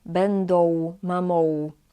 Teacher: In some regions of Poland, usually on southern East, people pronounce this letter at the end as O.